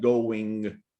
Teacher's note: when you have the ing, we don't usually get the G sound there. We actually get the ing, the N that ends in your throat, right? · We actually get the ing, the N that ends in your throat, right? Sort of a glottal sound at the back